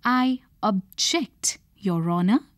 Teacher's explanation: You will notice that when used as a noun, the word carries the stress on the first syllable. When used as a verb, the stress is received on the second syllable. Also, the way you pronounce the initial syllable would change.